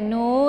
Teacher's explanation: nu dibaca panjang karena ada sukun wau yang didahului oleh dammah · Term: Mad Thabi'i